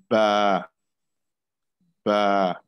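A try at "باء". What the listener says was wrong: Okay, when you say ba, don't make it heavy. Don't say ba, say ba, ba.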